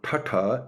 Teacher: a harder like double the strength t sound that's also retroflect